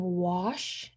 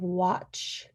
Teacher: And then saying wash instead of watch. So instead of that TCH, substituting it for an SH. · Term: deaffrication